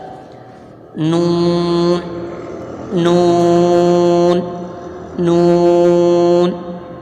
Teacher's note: नून का मखर जबान का किनारा और दांतों की जड़ है यानी कि जबान का किनारा जब दांतों की जड़ से लगता